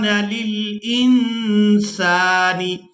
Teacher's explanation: یہاں نون ساکن پر اخفا کریں گے، آواز ناک میں جائے گی اور اس آواز کو کچھ دیر ناک میں روک کر رکھیں گے، اسی کو اخفا کہا جاتا ہے۔